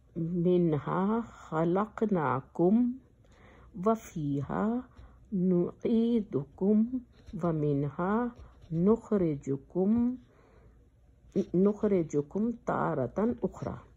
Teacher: جب میم ساکن کے بعد حرف واو اور فا آئے تو سختی سے میم کو ظاہر کرنا چاہیے تاکہ غنہ نہ ہو، یعنی کہ بہت کلیئر کر کے میم کو نکالنا چاہیے تاکہ غنہ نہ ہو۔ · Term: اظہار شفوی